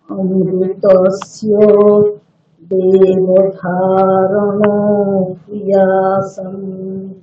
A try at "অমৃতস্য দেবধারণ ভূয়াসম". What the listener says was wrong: ভূয়াসম হয় দীর্ঘ উকার, ঠিক? দীর্ঘ উকারকে ভূ অনেকক্ষণ টেনে বলতে হবে।